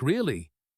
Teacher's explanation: if I say it with a rising voice and a long sound, like really, it might mean I am surprised, or even that I do not believe you at all. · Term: intonation